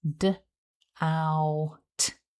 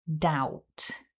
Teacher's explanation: It starts with the voiced D consonant, then we have the double vowel ow, followed by the unvoiced T sound.